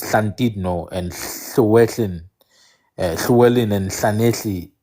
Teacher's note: It's the voiceless alveolar lateral fricative.